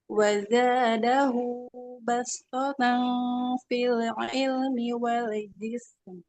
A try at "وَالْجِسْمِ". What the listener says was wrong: Nah, lam sukunya jangan memantul. Wal jism.